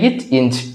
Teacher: நாக்கினுடைய இடைப்பகுதி, அன்னத்தினுடைய இடைப்பகுதி